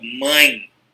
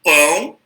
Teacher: se você falar a palavra mãe, ó, você já sente um pouquinho do ar saindo pelo nariz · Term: ditongo nasal